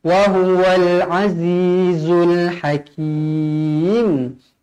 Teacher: Di sini mad arid disukun, dibaca dua atau empat atau enam harukat.